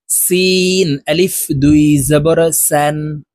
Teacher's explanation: সিন হরফ উচ্চারণ করার সময় বাহিরে বাতাস বের করে উচ্চারণ করতে হবে